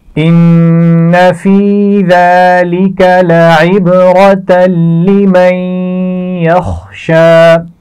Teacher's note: نون ساکن کے بعد حرف یا آ گیا ہے تو آپ جانتے ہیں یہاں پر غنہ کرنا ہے اور ملا کر بھی پڑھنا ہے